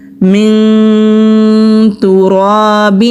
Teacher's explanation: خَلَقَكَ مِن تُرَابٍ. نون ساکن کے بعد تا آ رہا ہے, اخفا ہوگا, را کو موٹا پڑھیں گے کیونکہ را کے اوپر زبر ہے, خالی الف سے پہلے زبر ہے, الف مدہ ہے.